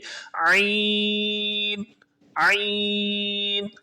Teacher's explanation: حلق کے درمیان پر انگلی رکھ لیجئے اور یہ لفظ جب آپ پڑھ رہے ہیں اس وقت حلق کے درمیان سے آواز آتی ہوئی محسوس کیجئے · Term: عین کا مخرج